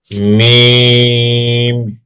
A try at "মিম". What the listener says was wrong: জি, মিমটা কিন্তু ততটা প্রেসার দিয়ে উচ্চারণ হবে না, স্বাভাবিকভাবে উচ্চারণ হবে, একটু নরমের মতো হবে। তো আমরা আগে পড়েছি, তারপরও এটা হচ্ছে একটু নরমের মতো হবে। আর 2 ঠোঁট থেকে উচ্চারণ হলে এমনিতেই নরম হয়, তখন আর আলাদাভাবে বলা লাগে না যে নরম হবে। মিম।